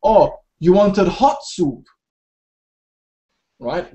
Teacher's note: the stress here is hot